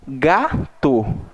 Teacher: Então, eu pronuncio, né, a primeira sílaba ali, ga, recebeu uma tonicidade maior do que o to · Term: paroxítona